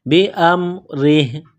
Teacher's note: را کے نیچے زیر ہے، را کو باریک کرنا ہے